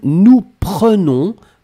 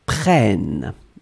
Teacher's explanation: Really open. You don't need to pronounce any double N. You just open the E.